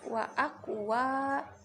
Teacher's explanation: wanya itu berharokat fathah bertemu dengan alif, dibaca panjang 2 harokat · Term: matobi'i